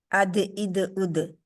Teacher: जुबान की जो नोक है हमारी वो ऊपर वाले दो दांतों के किनारे से लगती है ना वो बाहर निकलती है ना वो अंदर रहती है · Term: दाल